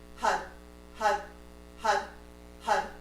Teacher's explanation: your heart projecting from your throat hut hut hut hut and as you say that hut your tongues hitting the roof of your mouth